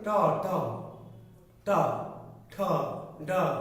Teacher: যখন বলছেন ট ট ট ঠ ড, জিহ্বা দেখেন সোজা না, কিন্তু মাথাটা কি হয়েছে একটু বাঁকা হয়ে গেছে। ট ঠ ড ঢ বললে জিহ্বার অগ্রভাগটা কি বাঁকা হয়। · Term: জিহ্বার উল্টানো অগ্রভাগ